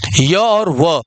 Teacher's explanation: मुख द्वार बहुत सकरा हो जाता है, और हवा जो होता है, हवा स्वर की भांति बीच में ही निकल पाती है। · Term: अर्धस्वर